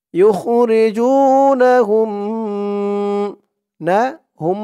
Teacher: এখানে মিম সাকিনে ইদগাম গুন্নাহ করতে হবে